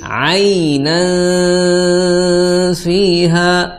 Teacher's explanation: jadi harus ada suara samar disertai dengan dengan gunnah